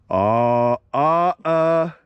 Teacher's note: I tend to slightly alter the alpha so it's pronounced a little bit more nasal a little bit more like ah here we go ah azazazaz